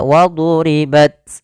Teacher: Yang pertama dia syiddah dulu tertahannya suara baru dia alirkan nafasnya. Waduribat tidak langsung waduribat tidak banyak-banyak dan e sifat hamasnya dikit saja.